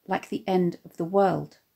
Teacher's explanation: anapaests (de-de-DUM), e.g. “like the END | of the WORLD”